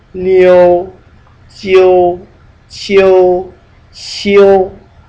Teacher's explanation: in all these cases you really pronounce the O even though it's not written